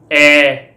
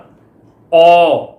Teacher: ਇਹਨਾਂ ਦੇ ਉਚਾਰਨ ਸਮੇਂ ਜੀਭ ਦੀ ਸਥਿਤੀ ਬਿਲਕੁਲ ਨੀਵੀਂ ਹੁੰਦੀ ਆ, ਇਸ ਕਰਕੇ ਇਹ ਨੀਵੇਂ ਸਵਰ ਆ